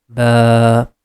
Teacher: The reason is it's coming after fatha. And because of alif, we are going to stretch fatha sound for 2 count